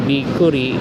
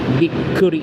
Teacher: So notice that I place stress on the k of the ku because there's a small chu on the left side of the ku. So instead of just saying bikuri, it's a bikuri. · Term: doubled consonant